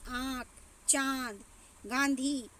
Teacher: जो अनुसार होता है उसका दोस्त इतना से होता है और जो अनुनासिक होता है उनका उच्चारण नाक और गले दोनों से होता है